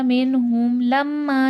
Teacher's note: میم مشدد غنہ ہوگا اور الف مدہ ہے، الف سے پہلے زبر ہے، کھینچ کے پڑھا جائے گا